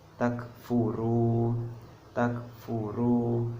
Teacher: dibacanya panjang dua harokat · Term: Mad Thobi'i